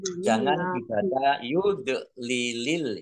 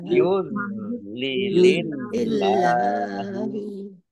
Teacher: Wa may yudlilillahu nun sukun bertemu dengan huruf ya bacaan idgham bi gunnah masuk dengan mendengung yaitu mendengung ya ditandai yaknya ada tasdidnya. Dznya jangan dipantulkan bukan kolkola